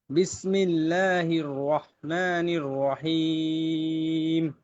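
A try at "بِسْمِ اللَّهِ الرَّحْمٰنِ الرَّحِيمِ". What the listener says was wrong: কিন্তু শেষের টানটা আপনারও কম হয়েছে। এটা যাদেরকে বলতেছি কম হয়েছে, আপনারা একটু নিজেও চিন্তা করবেন যে কিভাবে একটু বেশি দেওয়া যায়। রহিম, রজিম।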